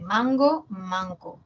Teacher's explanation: ga y K son velares